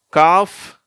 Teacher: காஃப்னு சொல்லும்போது வெறும் எஃப் உச்சரிப்போடு வந்துடுது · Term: சைலண்ட்